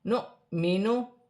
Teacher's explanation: حمزہ پر جزم کی حرکت ہے، جھٹکے کے ساتھ پڑھا جائے گا، جیسے نؤمنو۔